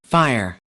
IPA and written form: faɪr (fire)